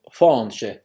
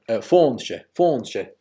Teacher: this agh became a in Connacht, as I say, fáinche, and it became well, kind of an o in East Ulster, fóinche